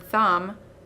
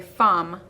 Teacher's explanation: that cannot be made for example as in the last slide if i can't make the th sound i might substitute the f sound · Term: substitution